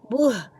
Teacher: हलक के आखिरी हिस्से से हा को अदा करेंगे। बह और ये हा बेस वाली होती है यानी भारी आवाज की होती है। · حلق کے آخری حصے سے ہا کو ادا کریں گے